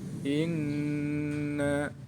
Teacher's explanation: Cara membacanya, nun tasydid dibaca mendengung. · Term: hunnah